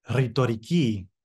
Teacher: in Greek we roll the R a little bit.